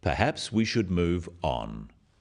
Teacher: is phrased as a suggestion, but it is said in a firm way with a falling intonation at the end